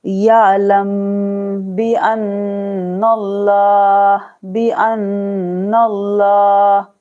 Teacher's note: यहाँ पर गुन्ना करना है, हमजा नून जबर अन, नून लाम जबर नल, लाम खरा जबर ला, हा जबर हा, यहाँ गुन्ना और यहाँ पर पूर्व पढ़ना है, ठीक है। लाम को पूर्व पढ़ना है, मोटा पढ़ना है